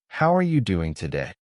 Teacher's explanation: You copy the stress on how and the rising tone at the end.